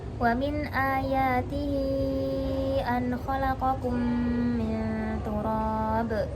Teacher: Mat ini mempunyai hukum mat jaiz munfasil, maka boleh dibaca panjang 2 harokat atau 4 harokat atau 5 harokat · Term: mat silah kubro